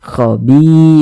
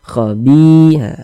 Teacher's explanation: Ada huruf ya, ada tanda sukun sebelumnya harokat kasroh, maka huruf yang memiliki harokat kasroh ini dibaca panjang, sehingga bi kita baca panjang, mad tabi'i panjang 2 harokat. Khobi begitu, khobi, dipanjangkan.